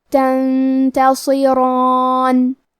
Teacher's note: را کی حرکت زبر اور اس پہ کھڑا زبر بھی ہے تو یہاں را کا حکم ہے تفخیم، تو ہم را کو اور مد الف کو دونوں کو تفخیم سے پڑھیں گے · حرف الصاد حروف التفخیم میں سے ہے تو ہمیں یہ حرف کو بھاری آواز میں پڑھنا ہے